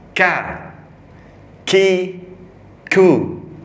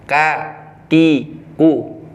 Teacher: Kalau kaf itu dia Ada mempunyai sifat hames, keluarnya nafas.